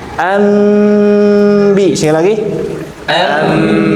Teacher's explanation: dipastikan harus gunnah. Ah, ini harus gunnah ya. Berarti masuk ke hidung. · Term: iklab